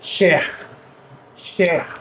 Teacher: E esse R não é aquele R que a gente tem trabalhado muito, o R retroflexo. Ele é um R gutural, ele é um R que sai daqui da garganta.